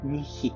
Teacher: la constrictive palatale sourde présente dans le mot grec nichi, qui désigne un ongle